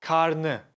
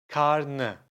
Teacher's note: See, I dropped the ı.